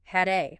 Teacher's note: links the D in had to the A